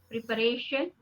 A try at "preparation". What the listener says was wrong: Not pre. You are putting too much stress on pre. It's preparation.